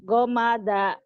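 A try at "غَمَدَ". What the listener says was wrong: Nggak ada yang panjang. Nggak ada yang panjang.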